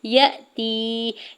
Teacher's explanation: یا کے زبر کو حمزہ ساکن کے ساتھ ملاتے ہوئے جھٹکا دیں گے. یا ساکن سے پہلے تا کے نیچے زیر ہے، یا مدہ ہو رہا ہے.